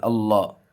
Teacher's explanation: اللہ کے نام سے پہلے زبر ہے، پر کر کے پڑھیں گے